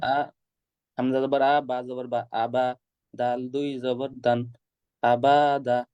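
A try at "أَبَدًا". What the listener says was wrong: আবা টান হয়ে যাচ্ছে, এটা বদ অভ্যাস আপনার। আবা, আবা বলে থেমে যান। হরকতের উচ্চারণ টান ছাড়া দ্রুত পড়তে হয়। আপনি দ্রুত করেন নাই।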